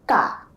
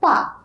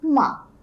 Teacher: When we add the akar after a consonant, it produces the aa sound